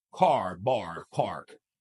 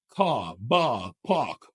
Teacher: Non-rhotic speakers, they do not emphasize the R's, unlike rhotic speakers.